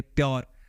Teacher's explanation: तो प्योर जब बोलोगे तो वहां पे पी के साथ आपको एक ये पफ मिल जाएगा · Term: एस्पिरेटेड साउंड, एस्पिरेटर साउंड